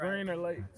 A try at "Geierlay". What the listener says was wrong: Greer Lake. It's Lay, not Lake. Lake. Geierlay.